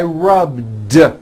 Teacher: All I did was add a voiced D sound at the end.